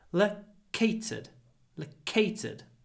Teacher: The stress comes from the pause and the aspiration, not the O.